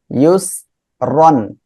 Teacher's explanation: আর র নিচে জের আসছে চিকন করে পড়বো